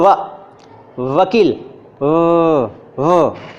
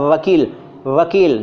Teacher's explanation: ऊपर का होंठ खुला हुआ है, नीचे के होंठ को दांत ने दबाया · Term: दंतोष्ठ